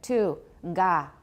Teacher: voiced velar initial stop